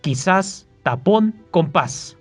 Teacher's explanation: la sílaba tónica se encuentra en su última sílaba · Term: aguda